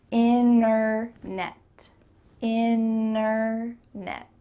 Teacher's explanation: when native speakers are speaking quickly we're going to cut out that T completely and just say in a net inner net let's go back